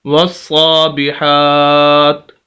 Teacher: تو وقف کا اصول بھی یہ ہے کہ آخری حرف کو ساکن کر دیں تو یہ زیر ختم ہو جائے گی، تو ہمارا لفظ وصابحات سے ہو جائے گا، وصابحات، تا پڑھیں گے لیکن زیر نہیں پڑھیں گے، وصابحات۔ اور یہی اصول ہے پورے قرآن کے اندر، جب آخر میں زبر زیر پیش یا 2 زبر 2 زیر 2 پیش ہوں تو وہ یہی اصول پایا جاتا ہے کہ آخری حرف کو ساکن کر دیا جائے۔